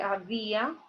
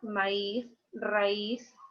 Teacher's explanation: la mayor fuerza de voz la va a llevar la vocal cerrada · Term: acento